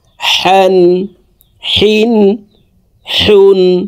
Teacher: হা হরফ হলকের মধ্যখান থেকে উচ্চারণ করব